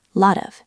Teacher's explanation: Lot ends in T. Of starts with a vowel. That's a flap T.